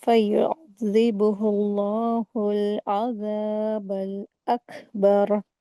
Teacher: لفظ اللہ کا جو لام ہوتا ہے اسے لام جلالہ بولتے ہیں، اس سے پہلے پیش آیا ہے، تو اس کو ہیوی کر کے پڑھیں گے